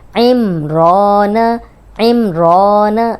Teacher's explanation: عمران، عین زیر میم ام، رو کھڑی زبر رو، ام رو نون زبر نا، عمران عمران. اب دیکھیں صرف رو لمبی ہو رہی ہے اس لیے کہ اس پہ کھڑی زبر ہے، اور را پہ جب بھی زبر یا پیش ہو را کو موٹا پڑے.